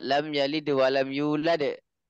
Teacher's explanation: maka ditambahkan dal sakinah muqalqalah